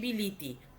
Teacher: তাহলে বিলাতি ব যুক্ত ই যুক্ত ল যুক্ত আ যুক্ত ত যুক্ত ই, দুটো ইর মাঝখানে আটা একটা বিঘ্ন সৃষ্টি করে, যার জন্য তিনটেকেই আমরা ই করে দিয়ে বিলিতি করে দিলাম। এইটাকে বলা হয় কি স্বরসঙ্গতির একটা প্রবণতা।